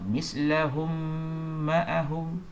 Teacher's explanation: Mim bertemu dengan mim. Idgham mislain, mim mati bertemu dengan mim yang berbaris selepasnya. Jadi dibaca dengung dengan kadar 2 harakat.